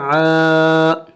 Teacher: عین بھی حروف حلقی میں سے ہے یعنی حلق سے ادا ہوگا